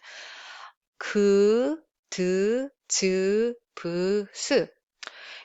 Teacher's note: So plain sound, these kind of sounds are basically voiceless sounds without air aspiration